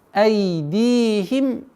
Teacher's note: Здесь у нас долгота кесры в размере двух огласовок. Удлиняем. Айдихим афаля.